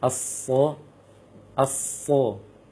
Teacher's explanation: karena dia huruf isti'la, naik lisan kita ketika mengucapkan huruf, maka sofirnya lebih jelas, lebih kuat. · harus nampak bunyi desirnya seperti bunyi siulan seperti itu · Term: sifat as-sofir